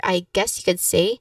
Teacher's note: You emphasize on the word guess here, I guess you could say, so that it can highlight the uncertainty.